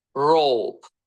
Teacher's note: Yəni sadəcə bizim dildəki kimi, Azərbaycan dilindəki kimi o demirik. O rope r samitinin səslənməsi bizim dildəki kimi r deyil pəltək r olaraq olacaq yəni r r r sonda i oxunmadı ondan əvvəlki sa sayti əlifbadakı adı kimi oxunacaq.